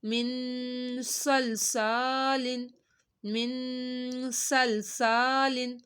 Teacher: صاد کو ہم نے دونوں کی سیٹی نکالی ہے · سا کو ہم نے ایک الف کے برابر کھینچا کیونکہ الف سے پہلے زبر آ رہا ہے